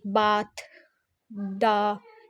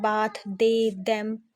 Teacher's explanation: फिर आ जाता है dental. द dental sounds are produce with द tongue tip behind द upper front teeth. ठीक है, इसमें अपर फ्रंट टिथ का हमारा जो है वो होता है लाइक बाथ, द.